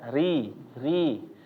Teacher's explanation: Jadi bacaannya kalau misalnya ro dia agak naik belakang lidahnya, kalau ri ya, ri, maka dia ya lurus saja udah. Jadi lidah yang belakang biasa nggak ada naik-naiknya, langsung nyentuh ke makhrajnya atau ke tempat keluarnya. · Ri Ri jangan dibanyakin getarannya tetap sama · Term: tarqiq